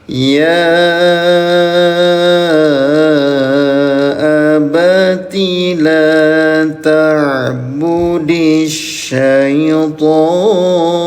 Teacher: Huruf ya yang ada tanda alisnya dipanjangkan selama lima ketukan ya namanya mad jaiz munfasil